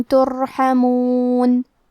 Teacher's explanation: کلمت ترحمون میں را پہ جزم ہے یہاں را کا حکم ہے تفخیم تو ہم را کو موٹی آواز میں پڑھیں گے